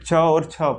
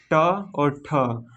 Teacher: प्रत्येक वर्ग का प्रथम और द्वितीय, ये क्या होंगे, अघोष होंगे